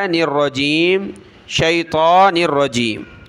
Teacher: شیطان نون کو را کے ساتھ ملایا